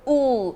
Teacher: it's back sound and close